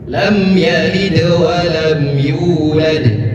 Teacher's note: Mim sukun bertemu dengan ya. Cara membacanya izhar, tidak ditahan.